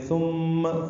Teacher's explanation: ثم تا نرمی سے پڑھیں گے، میم مشدد پہ غنہ ہے